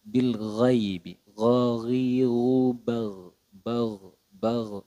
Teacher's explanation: makhrajnya huruf ghain itu pada ee aznal halqi atau pada ujung tenggorokan